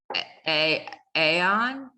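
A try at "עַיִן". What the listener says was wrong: I don't want to hear the yud. It's part of the vowel.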